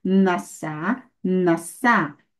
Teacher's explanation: vocês viram aí o alongamento do patá, tá? O patá foi alongado a um kametz gadol.